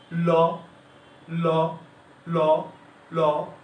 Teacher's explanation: জিহ্বার 2 পাশ দিয়ে, জিহ্বাটা একদম সোজা থাকে, মুখের দিকে থাকে, ল, ল, ল। জিহ্বার 2 পাশ দিয়ে মৃদু বাতাস বের হয়, এই জন্য এই ল বর্ণকে বলা হয় পার্শ্বিক বর্ণ